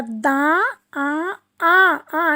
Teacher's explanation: मात्रा दा आ आ आ नासिका से बोला जाता है इसको नाक के अंदर से नासिका से स्वर उच्चारण होता है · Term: चंद्र बिंदु